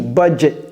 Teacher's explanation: vous voyez le T à la fin de budget, c'est le true T, budget. Un T et un S.